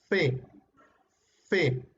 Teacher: El, cosa, ya, el labio inferior choca con los dientes superiores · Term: labio dental